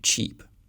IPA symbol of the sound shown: t͡ʃ